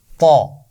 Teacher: اس کا مخرج ہے زبان کی نوک اور اوپر والے دانتوں کے پیچھے لگا کر موٹی آواز سے ہم پڑھتے ہیں طا. تا کی آواز باریک ہے، طا کی آواز موٹی ہے.